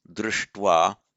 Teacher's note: a palatal sh followed by a dental t always morphs into a st, retroflex plus retro.